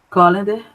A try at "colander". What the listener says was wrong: Quase isso. Colander. A sílaba tônica é o lá. Colander.